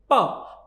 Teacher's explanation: जैसे मैं आपको कहूं कि प जो है ये ओष्ठ वर्ण, इसका मतलब ये है कि जो वायु है, प्राणवायु, उसको पहले ओष्ठ रोकते हैं और फिर एक विशेष प्रकार से छोड़ते हैं, जिससे पवर्ग की ध्वनियां उत्पन्न होती हैं। जैसे प कहते ही हमारे होठ दोनों मिल जाते हैं और ये ध्वनि वायु को छोड़ने के साथ उत्पन्न होती है।